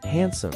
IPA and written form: ˈhænsəm (handsome)